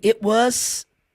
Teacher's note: o T realmente é uma pausa ali na fala que quase não aparece.